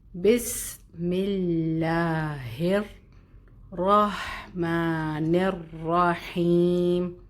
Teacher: ہا یہ موٹا ہوگا, بھاری ہوگا. ہر را موٹا ہوگا, اور شد بھی ہے, اس کی مضبوطی کا خیال رکھیں گے اور ادائیگی موٹی کریں گے